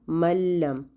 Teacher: مثلا ملم، اب اس میں آپ کو نون کی کوئی آواز نہیں آ رہی، نہ ہی آپ کو نون کی کوئی صفت اس میں سنائی دے رہی ہے. ملم، ہم میم سے ڈائریکٹ لام پہ چلے گئے ہیں بغیر کسی غنہ کے، بغیر نون کی آواز کے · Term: کامل ادغام